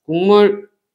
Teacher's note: 국물 발음하면 기억이 이응으로 바뀌죠? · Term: 비음화